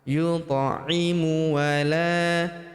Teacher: huruf ta berharokat sukun kita pantulkan atau kita qalqalahkan. Yut'imu wa la, huruf la kita panjangkan 2 harokat karena terdapat tanda alif di depannya yang ini.